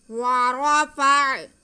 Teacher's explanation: فا کا زبر ہم عین کے ساتھ ملا لیں گے۔ ورفع، را پہ زبر ہے اس لیے را موٹا پڑا جائے گا۔